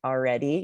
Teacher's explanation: when you said already you sort of skipped the L and said like already yeah the L this is very common